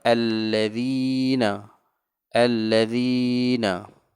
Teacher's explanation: Huruf ya kita akan baca 2 harakat kerana sebelumnya adalah berbaris kasrah. Kita tengok ya yang sukun sebelumnya berbaris kasrah, kita akan baca 2 harakat. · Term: mad asli